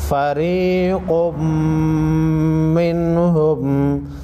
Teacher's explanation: क़ाफ हुरूफ़ मुस्तालिया में से है, मोटा पढ़ेंगे।